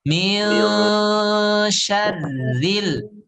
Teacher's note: di situ ada gunnah tapi gunnahnya tipis